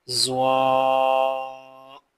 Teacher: زبان کی نوک جب اوپر والے دو دانتوں کے سرے سے لگے، اس سے سا، زال اور زواں ادا ہوتے ہیں